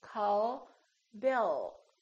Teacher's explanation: the tongue is relaxed and it touches right behind the upper teeth and it stays there so the American L is prolonged it's softer and longer